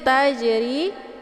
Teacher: Jim sukun ja ini adalah sifatnya Qalqalah Jadi mesti dibaca pantul